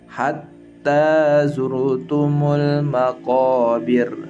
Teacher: Contoh berikutnya ra tafkhim karena sukun asli didahului oleh harokat dhammah dalam surat At-Takatsur ayat 2. Pada lafaz zurtum ya, ra sukunnya tafkhim.